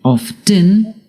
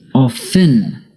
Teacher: Often can be pronounced two ways, by pronouncing the T, often, or by not pronouncing the T, often.